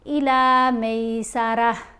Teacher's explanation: یہ گول تا ہے، اس کے اوپر ہم وقف کریں گے تو پھر گول تا جو ہوتی ہے یہ خاموش ہو جاتی ہے بلکہ ہا کی آواز دے گی